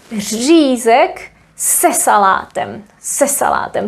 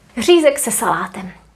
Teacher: The stress in Czech is always in the first syllable, but here we would stress this preposition and this would not count as a new word anymore, so we would say řízek se salátem, se salátem. So the main stress would fall on the preposition and salátem would not be as strong anymore.